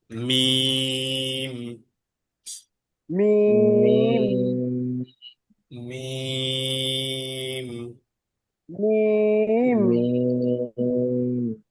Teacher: আর মিম হবে দুই ঠোঁটের শুকনো জায়গাকে একসাথে মিলিয়ে তিন আলিফ টান হবে